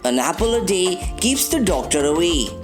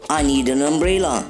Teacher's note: Notice carefully how quickly article an attaches itself to the word after it